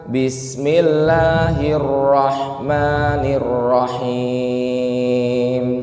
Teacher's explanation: Mad thobiinya diperpendek Bapak Ibu bukan bismillahirohmani itu kepanjangan